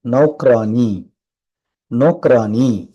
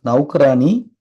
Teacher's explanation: அவ் மாத்திரை வருமானால் அந்த அவ் வந்து ஓவுக்கும் அவ்வுக்கும் இடையில ஒரு சவுண்ட் கொடுத்து படிக்கணும்